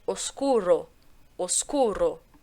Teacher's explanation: Sempre vai ser o O fechado, eu nunca vou ter O.